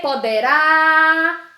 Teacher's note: a sílaba tônica é o rá. Então, ela é última sílaba.